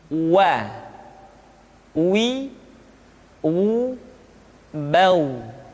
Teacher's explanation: huruf wa diucapkan dengan cara memonyongkan dua bibir kita